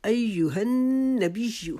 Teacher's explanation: نون کے اوپر شد ہے، وہاں پہ آپ نے ایک الف کی مقدار رکنا ہے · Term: نون مشدد کا غنہ